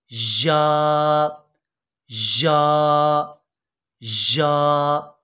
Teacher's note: और इसके बाद या, ये ज़बान के दरमियान और तालू के दरमियान से या अदा होगी